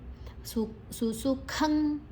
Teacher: ಖ ಮಹಾಪ್ರಾಣ ಅನುಸ್ವರದ ಉಚ್ಚಾರಣೆ ಂಗ್